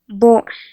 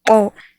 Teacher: In the following sets of monosyllables, the first contains a plain or plosive B, and the second contains a glottalized B